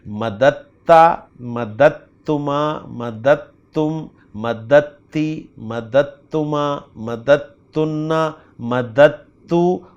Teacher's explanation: جہاں پر دال اور تا مل رہے ہیں نا وہاں پر دال کی آواز بھی نہیں نکلے گی